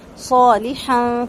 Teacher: صوت 2 حرکت لمبا صوت کو کریں گے، الف مدہ ہے اور ساتھ ساتھ صوت کو پر کریں گے